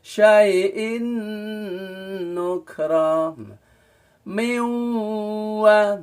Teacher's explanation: Jadi melebur tapi tidak sedengung, tapi miyau kan dengung, harus udara di hidung itu bergetar